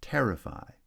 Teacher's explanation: terrify has stress on the first syllable